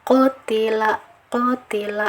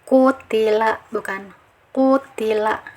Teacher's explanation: Nah, jika dilihat dari tempat makhrajnya, untuk bisa menempel kepada daging langit-langit atas harus diberi bantuan naiknya pangkal lidah ya. Pangkal lidahnya harus dinaikkan ke atas. Jadi bunyinya qaf ini tebal.